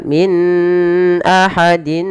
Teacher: kedua-dua bacaan ini harus dijelaskan antara nunnya dan tanwinnya, dan kita hukumi dengan bacaan izhar yang artinya jelas